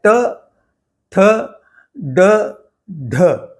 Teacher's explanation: तो इसमें आप देखेंगे कि जीभ थोड़ी पीछे की तरफ झुकी हुई है और ऊपर मुंह के ऊपर वाले हिस्से में मूर्धा को स्पर्श करती है